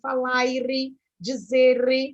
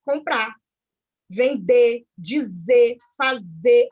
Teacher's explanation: O brasileiro corta esse R final. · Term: omissão do R final